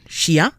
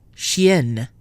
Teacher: Masculine, chien, nasal. Feminine with a double N, chienne, not nasal.